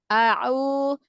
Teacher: Huruf ain yang domahnya jangan tercampur dengan suara hidung. Au. A'u, Masih tercampur ke hidung.